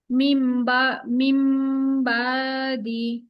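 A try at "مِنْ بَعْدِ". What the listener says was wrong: বা এভাবে টান দিবেন না আপু, যেভাবে বলি ঠিক সেভাবে বলার একটু চেষ্টা করুন। টান কেন দিবেন? আপনি এখানে বা দি বলে ছেড়ে দিবেন, মিম বাদি। একটু গলা নিতে হবে, মিম বাদি।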